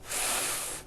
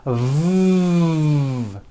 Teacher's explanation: the F sound is unvoiced and sounds like this F and the V sound is voiced and sounds like this V